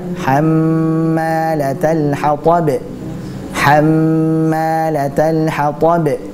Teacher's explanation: Pada kata hammalatal hatab ada mim bertasydid, maka itu dibaca dengan gunnah dengan tempo yang dipanjangkan.